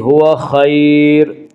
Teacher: وہ یا جو ساکن ہو اور اس سے پہلے زبر ہو، یالین کو نرم آواز کے ساتھ جلدی پڑھیں گے · خا کو پر پڑھیں گے، خا حروف مستعلیہ میں سے ہے